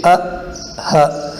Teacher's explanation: اور ہے ا اور ہ، یعنی حمزہ اور ہا، یہ ادا ہوتے ہیں گلے کے آخری حصے میں جو سینے کے قریب ہے